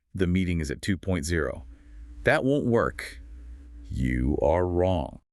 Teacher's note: When you state a fact, you tend to state it flatly with a falling intonation at the end. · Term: declarative tone